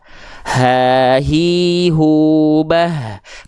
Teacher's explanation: H besar dilafalkan dari pangkal tenggorokan, karakter nafasnya biasa.